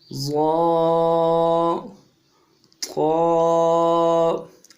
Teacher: قا، ظا دونوں کو موٹا کریں گے